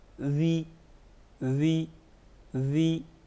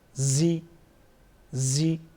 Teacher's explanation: ذال زیر ذی ذی ذی، زا زیر زی زی، ذال میں ہم نے نرمی کی، زا میں ہم سختی کرتے ہیں